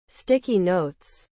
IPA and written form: ˈstɪki noʊts (Sticky Notes)